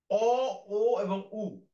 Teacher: অ, ও এবং উ উচ্চারণ করার সময় জিভের আগাটা ভাঁজ হয়ে পিছন দিকে যাওয়ার একটা প্রবণতা আছে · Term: পশ্চাৎ